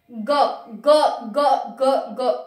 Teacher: तो दो तो पहले में आ गए, अघोष कहा था हमने, ये हो गए हमारे पास सघोष या घोष। ग ग ग ग ग ऐसा लग रहा है कि हमारा कंपन हो रहा है ग में, क में नहीं हो रहा लेकिन ग, ग में हो रहा है, घ में हो रहा है और ड में हो रहा है।